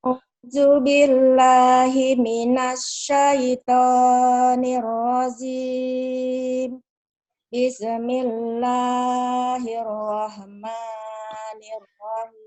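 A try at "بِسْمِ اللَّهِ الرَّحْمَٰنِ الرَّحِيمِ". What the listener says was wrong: Kok ada bisa sih? Bis, jangan ada bisa. Bis kota. Bisa kota, jangan. Bis.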